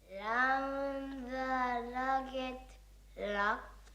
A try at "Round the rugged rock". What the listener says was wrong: No, not l. It's r. Round the rugged rock.